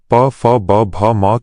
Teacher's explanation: प फ ब भ म के वर्णों को बोलते समय दोनों होंठ लिप्स आपस में मिलते हैं, इसलिए इनका उच्चारण स्थान ओष्ठ है